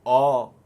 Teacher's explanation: पश्च स्वर जैसे आ, ह्रस्व उ, दीर्घ उ, ओ और औ, इन पांचों के उच्चारण के समय जिह्वा पीछे रहती है, इसलिए ये पश्च स्वर हैं। और अ ध्वनि के उच्चारण के समय हमारी जीभ मध्य में रहती है, इसलिए यह मध्य स्वर है।